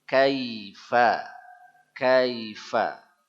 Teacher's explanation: Pakai ye yang lemes, lunak, harful lin nama dia.